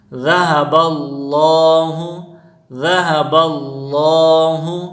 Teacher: لفظ اللہ سے پہلے زبر ہے تو اس کو موٹا کر کے پڑھیں گے۔